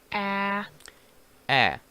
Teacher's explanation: did you see the position of your tongue it's very open in your mouth